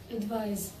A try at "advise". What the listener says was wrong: A little more vibration, please. Let's put the Z's here to help everybody, okay?